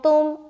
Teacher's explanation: तो यहाँ पर अंग में इख्फा कर लेंगे, तुम जब आप इख्फा करेंगे ना तो नाक में आवाज़ निकल कर आएगी ना, वो ऐसा लगेगा कि आप नाक से पढ़ रही हैं।